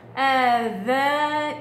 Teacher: الذال ما فيش فيها صوت الهمس، آذانهم، ميم ساكنة وراها ميم، صار عندنا ميم وميم متماثلين أضغموا ببعض، والميم غنتها المشددة أكمل ما تكون.